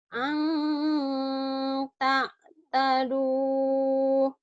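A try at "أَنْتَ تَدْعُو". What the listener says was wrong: Jangan dahanya. Anta tadu. Jangan anta taduh. Anta tadu. Ayo, jangan dahanya.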